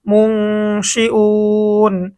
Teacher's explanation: মিম নুন পেশ মুং, মুং নুন সাকিন আসছে, নুন সাকিনের পরে ইকফা হরফ শিন আসছে, আমাদেরকে গুণনা করে পড়তে হবে। মুং শিন জের শি হামজা ওয়াও পেশ উ, মুং শি উ নুন জবর না, মুং শি উন।